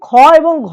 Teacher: এদের মধ্যে অল্প আমরা আস্তে করে উচ্চারণ করতে পারছি এবং ড এ শূন্য র এটাও কিন্তু এর সাথে যুক্ত হবে অল্পপ্রাণের ক্ষেত্রে আর মহাপ্রাণের ক্ষেত্রে দুই এবং চার অর্থাৎ খ এবং ঘ। এই যে খ এবং ঘ বলছি দেখো এখানে শ্বাসবায়ু কিন্তু বেশি লাগছে। তো এইজন্য এগুলো মহাপ্রাণ ধ্বনি।